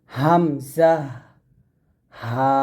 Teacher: এই দুটি হরফ কণ্ঠনালীর শুরু থেকে আমরা উচ্চারণ করব